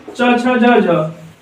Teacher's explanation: ये स्पर्श संघर्षी व्यंजन है संघर्षी भी है और स्पर्श व्यंजन भी है